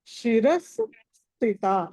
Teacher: విసర్గం ఉందా? సో విసర్గ స్థానంలో స పలకాలి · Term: సకారం